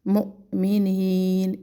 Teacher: واو کے اوپر حمزہ ہے تو اس حمزہ کو ہم نے جھٹکا دینا ہے